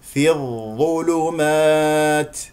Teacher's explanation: تاء ساكنه فيها همس لطيف جدا لا تبالغ فيه